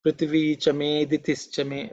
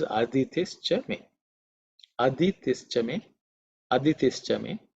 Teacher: In this mantra also, the I is normally silent when you chant.